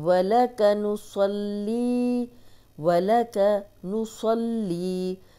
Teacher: स्वाद मोटा और ली को 2 हरकत लंबा करेंगे